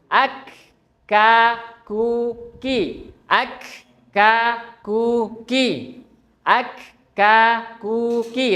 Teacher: Kaf keluarnya dari pangkal lidah bertemu dengan langit-langit yang keras keras ya. Ak ka ki. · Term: huruf kaf